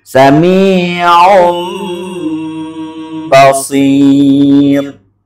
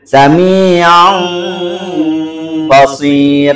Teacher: disertai dengan dengung tapi bacaannya tidak boleh sama dengan Ikhfa